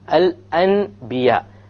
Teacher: You change the Nun Sakina, or you change the Tanween from an N sound, N sound, into a M, a meme sound. Therefore, because it is converted, we call it iqlab, which means to convert, to change.